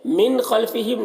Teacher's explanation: نون کے بعد یہاں پر خا ہے حروف حلقی میں سے تو نون میں اظہار ہوگا، نون کو ظاہر کر کے جلد پڑھنا ہے۔ خلفہم، خا کو پر پڑھنا ہے۔